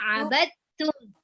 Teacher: Biasanya ada yang keceplosan abadatum, tapi jangan dibaca abadatum, huruf langsung ke huruf ta tasydid